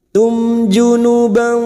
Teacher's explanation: dua atau tig harakat [Musik] mim sukun bertemu Jim Idhar syafawi mim sukun dibaca jelas tanpa mendengung